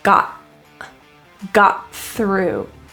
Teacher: there is a stopping in the throat